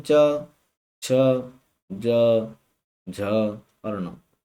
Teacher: जो च वर्ग है वो साथियों हमारा बोला जाता है तालु से